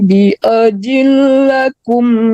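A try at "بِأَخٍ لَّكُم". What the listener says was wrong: Bi akhil, bukan bi ajil ya, tapi bi akhil itu fa ya.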